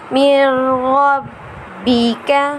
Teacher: را اور لام میں بغیر غنے کے اور باقی 4 حرف میں غنے کے ساتھ۔ تو یہاں نون ساکن کے بعد حرف یرملون کا را آ رہا ہے، اس لیے یہاں پر غنہ نہیں ہوگا۔